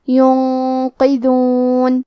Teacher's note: ینقذون، قاف کی ادائیگی زبان کے جڑ اور تالو کے نرم حصے سے ہے۔ قاف حروف التفخیم میں سے ہے تو ہم یہ حرف کو موٹی آواز میں پڑھیں گے، اور کیونکہ اس کے نیچے زیر ہے تو ہمیں قاف کو زیر سے پڑھنا ہے۔ · کلمت ینقذون میں نون ساکن ہے، پھر حرف القاف ہے، قاف حروف الاخفاء میں سے ہے تو ہم یہ حکم کو غنہ کے ساتھ ادا کریں گے۔ ینقذون، قاف کی ادائیگی زبان کے جڑ اور تالو کے نرم حصے سے ہے۔